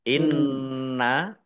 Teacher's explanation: nunnya dibaca ghunah ada tasdidnya ditahan dua harakat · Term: gunnah